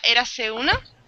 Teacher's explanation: se juntan las dos vocales, se junta la E y la U.